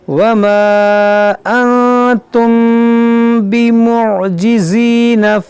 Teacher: میم ساکن کے بعد با ہے, تو یہاں پر اخفاء شفوی کا قاعدہ لگے گا, یعنی یہاں پر غنہ ہوگا